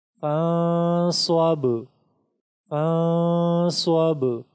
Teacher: اس نون ساکن کو بھی ہم اخفا کے ساتھ پڑھیں گے اور با میں ہم صفت قلقلہ کی وجہ سے تھوڑا سا ٹکراؤ پیدا کریں گے